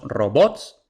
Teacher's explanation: robots tiene el acento en la última sílaba por tanto es aguda pero como termina en grupo consonante es